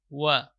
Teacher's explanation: Wa di sini huruf yang keluar dari dua bibir. Wa. Wa wada'na, itu dengan memunyungkan mulut ketika awal pengucapan huruf waw.